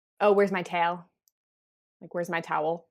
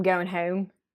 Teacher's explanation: another feature of Philly English is the fronting of the back vowels